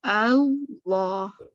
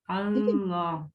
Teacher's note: دونوں شروع میں ہی نا دونوں لام ہیوی پڑھیں گے · لام کو ہمیشہ باریک پڑھا جاتا ہے, لیکن جب وہ لفظ جلالہ میں آتا ہے تب اس کو پورا پڑھتے ہیں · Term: اللہ کے نام کا لام